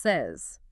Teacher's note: You'd expect it to rhyme with pays, but it doesn't. The vowel sound changes completely. And that s at the end sounds like z.